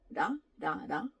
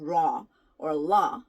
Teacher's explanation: this is neither R nor L it's more like the in between sound